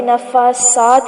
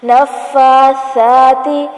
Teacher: یہ سین بن جائے گا اور معنی بدل سکتا ہے، تو سا ہمیشہ باریک پڑھا جاتا ہے اور نرمی سے پڑھا جاتا ہے